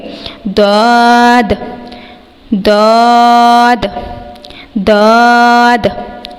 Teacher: منہ کو موٹے کی ادائیگی سے مراد ہے کہ منہ بھرا بھرا محسوس ہو اور زبان پیچھے سے ایلیویٹ ہو، یعنی تالو کی طرف اٹھے، داد۔ اور اس حرف کو ہم نے اوپر والی داڑھوں کی جڑ سے ادا کرنا ہے، زبان کی کروٹ سے شروع کر کے